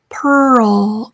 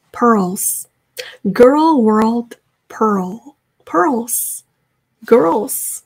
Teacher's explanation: 그래서 끝소리 L까지 완성을 해주셔야 돼요.